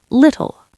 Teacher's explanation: We keep the T sharp, but the L is still quite dark.